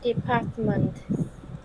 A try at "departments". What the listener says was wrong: departments. Okay, with S sound at the end.